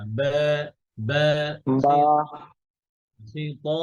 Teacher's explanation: বা তো দুই ঠোঁট থেকে উচ্চারিত হবে ভিজা অংশ